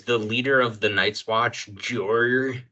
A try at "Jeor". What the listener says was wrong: Yeah, you're saying those names like way too similarly, but yes.